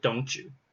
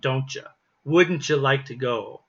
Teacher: the pronunciation sounds like a ch sound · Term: the ch sound